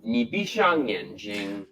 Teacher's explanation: used the retroflex sound like he actually curled his tongue and put his lips out